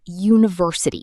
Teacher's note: It begins with the vowel letter u. >> But when you say it, it starts with a sound like you. That's a consonant sound. So we say a university, not an university.